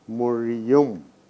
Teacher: Mori plus um. Since there are two vowels at the end of the first word and the beginning of the next word, we need a semi vowel and it is ya consonant. The whole is ya plus u.